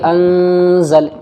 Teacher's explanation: نون ساکن کے بعد زا حروف اخفا میں سے آ رہا ہے، تو یہاں پر اخفا ہوگا غننے کے ساتھ میں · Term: غنہ